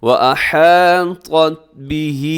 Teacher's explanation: طا موٹا پڑھا جاتا ہے، تا باریک ہوتا ہے۔ اگر دونوں کو ایک جیسا پڑھ دیں گے تو یہ بڑی غلطی ہوتی ہے جسے لحن جلی کہا جاتا ہے، جس سے معنی تبدیل ہو جاتے ہیں۔